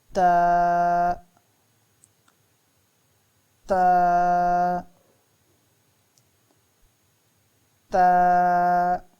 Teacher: زبان کی نوک اوپر والے دانتوں کی جڑوں سے لگے تو تا ادا ہوتا ہے